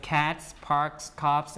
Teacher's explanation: a p and an f they are all voiceless sound right so you have an s which is also a voiceless sound